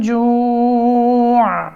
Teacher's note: جوع یہاں وقف کریں گے عین بھی ساکن ہو جائے گا